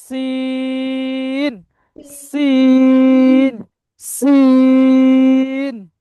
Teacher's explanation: সিন, হালকা একটু সিটি টাইপের হবে